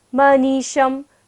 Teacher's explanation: तालव्य श है, तो यहाँ पर तालु से उच्चारण करना है, और पीछे क्या था, मूर्धन्य श, तो दोनों श का जब उच्चारण करें तो ध्यान रखें कि हम कैसे कर रहे हैं उच्चारण।